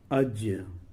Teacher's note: جیم کا مخرج زبان کا بیچ اور یہ اج زبان کا بیچ اور اوپر کا تالو ہے۔